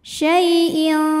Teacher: maka tanwin dibunyikan samar-samar siap-siap menuju qaf disertai bunyi dengungan dengungnya besar ya karena qf makhrajnya jauh dari Nun madnya adalah Madun karena · karena ada ya sukun didahului harokat fathah ya, maka dibacanya lembut. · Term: ikhfa ab'ad